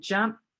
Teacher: the P sound, the ending sound in the word jump, is unvoiced, just like the T sound. So my voice stays off.